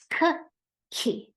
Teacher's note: notice how I added that burst of air I really held out the sound